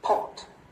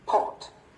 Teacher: cái giọng của họ trầm xuống đúng không ạ?